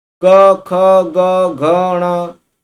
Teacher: क ख ग घ ण ये जो बोल पाएंगे तभी बोल पाएंगे जब हम कंठ का प्रयोग करेंगे